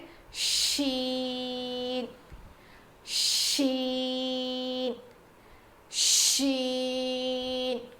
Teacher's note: زبان کے بیچ کے حصے سے شین ادا ہوتا ہے جیسے جیم ادا ہوا تھا.